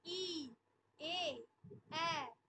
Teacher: উচ্চারণকালে জিভটা একদম সামনের দিকে এগিয়ে আসছে, সম্মুখ স্বরধ্বনি।